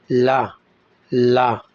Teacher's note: जिन व्यंजनों के उच्चारण में वायु जीभ के दोनों किनारों से निकलती है उन्हें पार्श्विक व्यंजन कहते हैं।